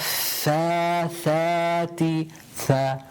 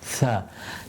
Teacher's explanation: Again, tip of the tongue touching the central incisor.